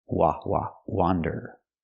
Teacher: pronunciation wander with the open a sound like hot and stop